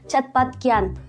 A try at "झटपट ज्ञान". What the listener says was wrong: अरे मैडम, चटपट ज्ञान नहीं, झटपट ज्ञान बोलो। अरे मैडम, चा नहीं, झा झा झा, झटपट ज्ञान।